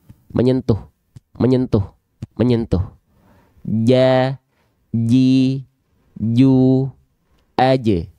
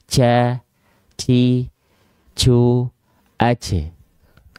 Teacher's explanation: tengah lidah kita sentuhkan, nempel ke langit-langit di atasnya, menyentuh. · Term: huruf jim